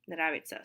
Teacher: Nravится, nravится, because the stress is on the first syllable. Because of vowel reduction, the second ya, it's kind of pronounced like an e